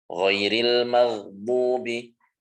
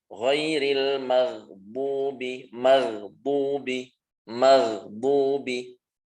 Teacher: huruf ghain itu tidak mantul. Tidak dipantul seperti beberapa huruf yang lain. Ghain tidak ada pantulan. Gho, mag, bukan mag, tapi mag.